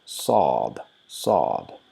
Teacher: So continuous O sound throughout the letter with very slight rounded mouth. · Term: Saad